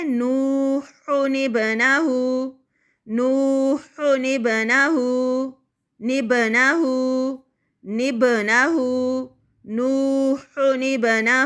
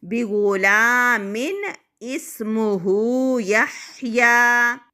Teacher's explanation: تو ابھی ہم نے قاعدہ پڑھا نون قطنی کا کہ تنوین کے بعد اگر حمزۃ الوصل ہو اور اس کے بعد والا حرف جو ہو وہ ساکن یعنی جزم والا ہو تو وہاں پر تنوین کی جو ایک حرکت ہے وہ نون زیر میں تبدیل ہو جائے گی، یعنی نون کسرہ کے ساتھ تبدیل ہو جائے گی